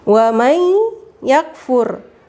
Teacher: Jadi dia harus ditahan. Syaratnya dengung itu ditekan, ditahan, ya. Jadi suara nunnya itu masuk ke ya.